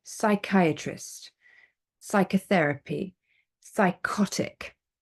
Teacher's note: but we don't pronounce the P